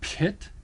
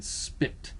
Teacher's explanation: sometimes it's pronounced as a an aspirated p as in pit and sometimes it's pronounced just as a simple as in spit